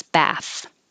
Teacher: when there's not an e at the end then the vowel is ah and the th is voiceless